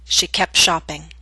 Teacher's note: careful speech you would hear the T she kept shopping but in Fast and formal speech we drop the T in that consonant group